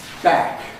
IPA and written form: bæk (back)